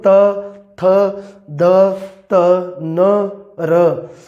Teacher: ਜੀਭ ਦਾ ਅਗਲਾ ਹਿੱਸਾ ਹੈ ਉਹ ਦੰਦਾਂ ਨੂੰ ਵੀ ਛੂੰਹਦਾ ਹੈ ਤੇ ਤਾਲੂਏ ਨੂੰ ਵੀ ਛੂੰਹਦਾ ਹੈ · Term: ਦੰਤੀ ਧੁਨੀਆਂ